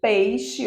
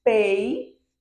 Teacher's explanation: Observe que Enquanto Eu pronuncio pei não tem pausa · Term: ditongo